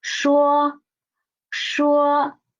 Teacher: Next one is 说. 说 说 The initial is shi, the final is wo, and the tone is the first tone.